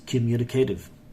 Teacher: Look at this T, guys. The T between two vowels are changing to D.